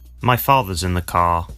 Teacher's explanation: the car let's focus on two words father father car car notice that the final r sound is not pronounced in british english · the r sound is not pronounced unless it's followed by a vowel sound